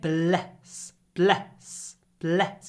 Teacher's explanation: It's a really short E. The E is clipped before the S.